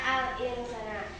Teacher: Bacaan alinsana samar dan mendengung dibaca alinsana